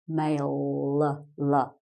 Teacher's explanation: the L you make with your tongue on the roof of your mouth